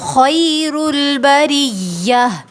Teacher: صالحات اولئک ھم خیر البریہ، خی میں دیکھیں خو میں خرخراہٹ پائی جاتی ہے، بریہ میں سختی کریں گے اور را کو باریک پڑھیں گے